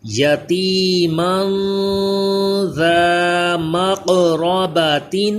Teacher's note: تنوین کے بعد ذال حروف اخفا غنہ کریں گے، ذال کو سیٹی پیدا نہ ہو، زبان دانتوں سے چپکائیں، قاف کو پر بھی پڑھیں اور قلقلہ بھی کریں، حروف قلقلہ بھی ہے یہ۔